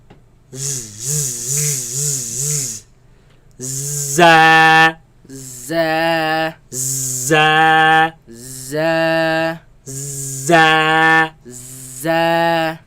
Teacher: So the tip is placed all the way towards the tip of the towards the roots of the bottom teeth, bottom, and then the sound is produced from between the tongue and the teeth